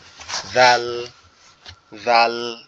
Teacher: এরপরে যে অক্ষরটা আছে সেটা হচ্ছে জাল, জাল অক্ষরটা আমাদের জিহ্বার আগা সামনের দুই দাঁতের আগার সঙ্গে লাগবে, লেগে হালকা আওয়াজে উচ্চারিত হবে